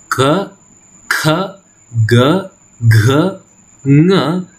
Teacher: The sounds k, kh, g, gh, ng are velar sound and they emerge from the throat